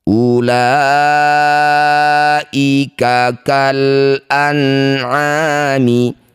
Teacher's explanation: Nun sukun bertemu ain disebut bacaan izhar halqi. Baca jelas nun sukunnya tanpa dengung. · Mad thabi'i bertemu dengan hamzah di satu kata. Jadilah bacaan namanya mad wajib muttasil. La panjangkan enam harakat. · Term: idhar halqi